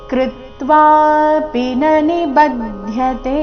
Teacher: ಕೃತ್ವಾಪಿ ಇಲ್ಲಿ ಪಿ ರಸ್ವ ನ ರಸ್ವ ಇದೆ.